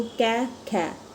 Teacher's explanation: जो क वर्ग है ये कंठ ध्वनि से बोला जाता है, तो कै में जितने भी आएंगे वो कंठ ध्वनि से बोले जाते हैं, ठीक है।